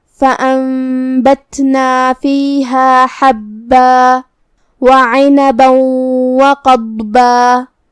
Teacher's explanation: یہاں حرف العین کو ہم حلق کے درمیان والے حصے سے ادا کریں گے